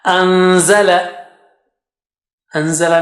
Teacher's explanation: Just take the tongue close to za makhraj and then take the sound out from your nose.